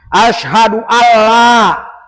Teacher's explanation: Jadi kalau ada tanwin domah ataupun nun mati ketemu dengan lam jangan digunakan. Tetap buang n-nya secara pembacaan. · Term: bilagunah